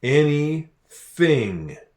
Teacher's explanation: the th, where we put our tongue between our teeth to make that sound.